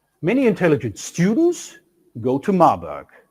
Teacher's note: we have two tone units with one nucleus each